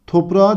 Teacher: Toprağa derken kelimenin kökü topraktır. K sesinin yumuşayarak yumuşak G'ye dönüştüğünü görüyoruz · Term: ünsüz değişimi